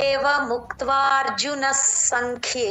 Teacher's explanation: స కింద స వత్తు అక్కడ సంఖ్య దగ్గర క మహాప్రాణం